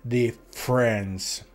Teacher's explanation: Adesso, nota come si scrive, è molto molto simile, si scrive differenze, quindi molto simile all'italiano, ma la doppia F non si pronuncia, si pronuncia come se fosse una sola, e la E prima della R sparisce, quindi diventa difference.